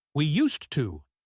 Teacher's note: When we talk about habits in the past, we say used to. In fast speech, the S and T blend.